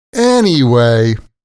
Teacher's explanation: Anyway, listen to how I pronounce it when I want to end a conversation. Anyway, the intonation is like going down the stairs, like you're going somewhere. Anyway, this intonation is important because when we say this word like this, anyway, it's a soft signal that the conversation is wrapping up.